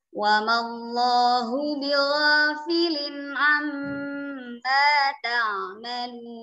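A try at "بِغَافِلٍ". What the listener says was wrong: Suara ghain bighafilin bukan bigha.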